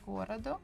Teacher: So the second one, O, is unstressed. That's why we pronounce it as A. · The stress falls on городу, on the first go.